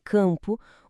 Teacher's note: Quando uma vogal aparece antes de M ou N na mesma sílaba, como em campo, o M não tem som de M. Ele, na verdade, muda o som do A, fazendo o ar sair um pouco pelo nariz. O resultado é um som só, um som anasalado que é representado por duas letras.